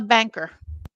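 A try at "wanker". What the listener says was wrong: You pronounce that wrong. It's got a W at the start, not a B.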